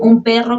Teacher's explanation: la N en un perro que se asimila a la P y se pronuncia como M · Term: asimilación